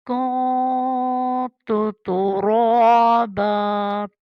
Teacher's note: وَيَقُولُ الْكَافِرُ يَا لَيْتَنِي، نی يَا لَيْتَنِي كُنتُ تُرَابًا، یہاں پہ اخفا ہوا ہے، دونوں تا پتلی ہے، را کو پر پڑھنا ہے